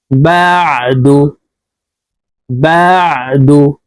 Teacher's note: আইনের মাখরাজ হালুকের মধ্যখান থেকে হবে